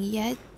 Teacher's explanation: the front of the tongue is raised toward the palatal area of the roof of the mouth but it does not come close enough for a frictive sound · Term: approximant